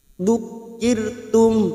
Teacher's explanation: ro sukun yang didahului kasroh kita baca tipis tarkik